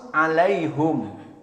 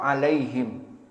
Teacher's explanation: dhammah of the pronouns alaihum, not with kasrah alaihim